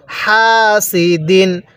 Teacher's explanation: এই তানবিনের পরে হামজাটি হলো ইজারে হরফ যার কারণে আমরা এই তানবিনটা গুন্নাহ করবো না স্পষ্ট করে পড়বো কিভাবে পড়বো হাসিদিন হাটা উচ্চারণের সময় মুখ দিয়ে হালকা বাতাস বের